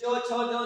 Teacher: फिर च छ ज, देखो टकरा रहा ऊपर में, च छ ज जहां टकरा रहा उसको बोलते हैं तालु